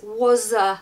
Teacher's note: we almost make a z you know just to get that really smooth and beautiful